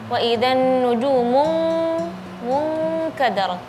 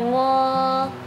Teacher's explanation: ghunatul ikhfa ketika nun sukun atau tanwin ketemu dengan kaf atau qof. Jadi suara ghunahnya syadid ya. Jadi ee suaranya seperti suara ing waidan nujumun mun kadar bukan muadrat bukan ya.